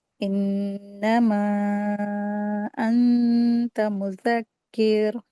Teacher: نون ساکن کے بعد تا آیا ہے، تو غنہ کر کے اخفا کر کے اس کو ریڈنگ کریں گے، اسی لیے پڑھ رہے ہیں ایسے، اور یہاں پہ نون مشدد ہے، اس کو غنہ کرنا ہے، انما انت مذکر، اس طرح سے اس کو پڑھا جائے گا۔